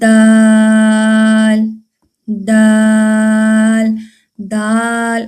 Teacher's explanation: زبان کی نوک اوپر والے دانتوں کی جڑوں سے لگے تو دال ادا ہوتا ہے